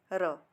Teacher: जब हम र कहते हैं, हमारी जीवा जो थोड़ा हल्का सा कंपन होता है, हवा बाहर आती है और हल्का सा कंपन पैदा कर देती है, उसे हम कहेंगे लुंठित और प्रकंपित व्यंजन।